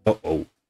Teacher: glottal stop with this question mark looking symbol is one that you make with the throat. This is not really used as a part of words in English, but it does exist in English, such as in uh-oh.